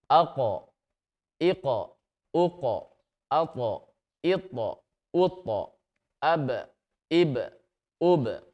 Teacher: Ada suara pantulan yang kuat. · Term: qalqalah